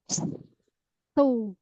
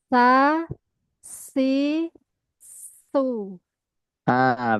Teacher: Jadi sin itu tidak ada yang tebal. Sin itu tipis semuanya.